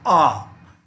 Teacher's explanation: जिस स्वर को बोलने के लिए मुंह को पूरा खोल दिया जाए जैसे कि आ तो एक मात्र विवर्त स्वर होगा आपका आ